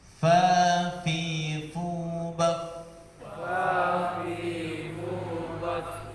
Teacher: Syafatan berarti dua bibir. 1, fa, keluar dari bibir bawah bagian dalam yang bertemu dengan ujung gigi seri atas